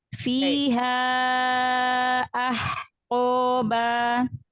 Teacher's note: Mad jaiznya panjangkan lagi 4 sampai 5 harokat.